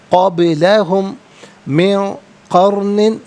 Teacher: قبلہم من قرن، قبلہم میں میم ساکن ہے، اسے من کی میم کے ساتھ ملائیں گے، میم کی آواز کو غنّے کے ساتھ ادا کریں گے